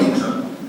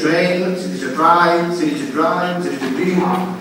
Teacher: Il fatto di dare un suono palatale alla T e dire intra è qualcosa che comunque è comune un po' a tutti i dialetti della Sicilia